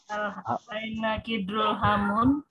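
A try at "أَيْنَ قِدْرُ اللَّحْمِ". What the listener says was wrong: Itu ada lamnya loh. Kidrul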